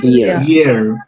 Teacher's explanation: Ahora fíjense, cuando pronunciamos here, tenemos que tener cuidado con la I, porque algunos dicen G. Y ese sonido no está.